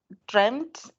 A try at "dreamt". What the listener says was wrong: I didn't hear the last T.